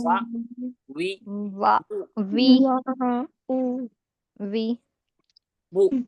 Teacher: वाओ दोनों होठों को गोल करने से और अधूरे मिलने से वाओ अदा होता है।